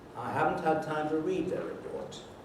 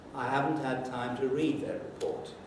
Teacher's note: there is a stress on the first syllable of haven't and another one on read